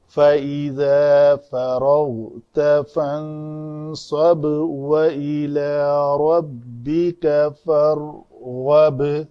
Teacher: فَإِذَا فَرَغْتَ فَانصَبْ وَإِلَى رَبِّكَ فَارْغَب، یعنی 2 ساکن آئے تھے وسط کلام میں، یہ بھی ساکن تھا یہ بھی ساکن تھا، لیکن اس ساکن پہ با کے اوپر مخرج کو چھوڑ دیا، وہ قلقلہ ہوا، پھر واو کو لیا، لیکن یہاں پہ را کے مخرج کو چھوڑا نہیں، پھر آگے غین کو لیا، فرغب، فرغب نہیں کیا۔